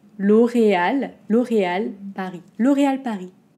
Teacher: on n'entend pas le s de paris